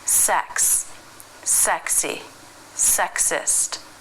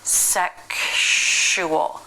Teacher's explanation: So with the word sex, something changes when it's followed by U, like in sexual, sexuality, bisexual, sexualized. Now instead of KS, the sounds we get are KSH. Ksh, k, sh, sexual.